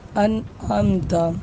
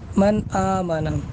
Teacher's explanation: دیکھیے یہاں پر نون ساکن ہے حمزہ کے بعد، اور اس کے بعد عین ہے، تو عین حروف حلقی میں سے حمزہ ہا، عین ہا، غین خا، تو اس لیے اب یہاں پر نون ساکن کو ہم بغیر غنہ کے ظاہر کر کے پڑھیں گے، انعمت۔ یہ تو ایک ہی کلمے میں مثال ہو گئی کہ نون ساکن بھی ہے اور حروف حلقی بھی ہے ایک ہی کلمے میں۔